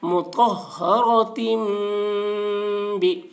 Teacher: تنوین کے بعد با آ رہا ہے اس لیے تنوین کو میم سے بدل کر غنہ اور اخفا کے ساتھ پڑھیں گے ، اس کو اقلاب کہتے ہیں مطہرۃ بھی، حمزہ یا زبر